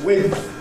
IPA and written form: wɪdθ (width)